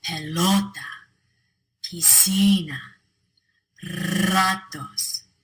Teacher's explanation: us all those words end in a vowel N or s so the natural stress falls on the second to last syllable